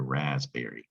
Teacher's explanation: it's got a p in the middle of this word all you spellers out there but you don't hear it